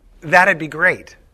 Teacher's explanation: we pronounce the contraction d as an extra syllable